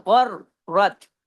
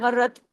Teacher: र की आवाज दो दफा आनी चाहिए। गैन और र दोनों हैवी भी पढ़े जाएंगे और र को डबल भी पढ़ा जाएगा। · پھر دیکھیے را پہ تشدید ہے تو ڈبل را ہے، غر رت. را کی آواز دو دفعہ آنی چاہیے. غین اور را دونوں ہیوی بھی پڑھے جائیں گے اور را کو ڈبل بھی پڑھا جائے گا، سختی سے جوڑا جائے گا. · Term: डबल र